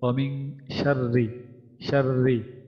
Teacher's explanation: এখানে ইকফার হরফ থাকার কারণে নুন আমাদের মিং মিন না হয়ে মিং হয়ে যাবে, অস্পষ্ট, লুকায় পড়তে হবে।